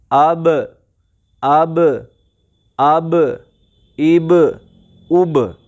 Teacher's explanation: یعنی دونوں ہونٹ آپس میں ملیں گے پھر الگ ہو جائیں گے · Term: مخرج ٹکر کھا کے الگ